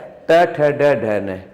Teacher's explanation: हमारी जीभ आगे से मुड़ जाती है